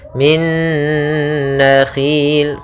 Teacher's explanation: Ya, idgham bi gunnah, yaitu kemudian masukkan minna. Ya, min, langsung masukkan nun yang kedua karena dia idgham bi gunnah, kemudian ditahan gunnahnya